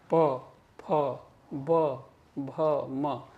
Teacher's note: ये पांचों ध्वनियां जो हैं दोनों होंठों के मिलने से बनती हैं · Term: बाइलेबियल